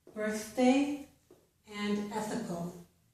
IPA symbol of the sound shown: θ